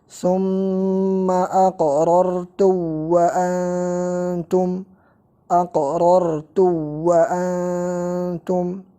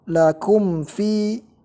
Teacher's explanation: Mim sakinah setelahnya waw dan fa itu hukum asalnya adalah izhar.